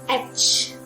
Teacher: The starting is with a and the ending is with a ch sound